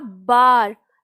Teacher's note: तो बार जब बोला तो मेरे जो दोनों होठ हैं वो आपस में लगे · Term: ओष्ठ